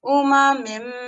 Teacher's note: We would completely drop the nun, which if we were to read it by itself, it would be min. But in this case, it's a meme following it, so it changes into a meme.